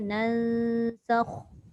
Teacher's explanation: nun bertemu sin tu dengungnya 2 harakat